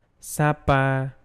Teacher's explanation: it is a voiceless consonant so you don't have to vibrate your vocal cords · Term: P sound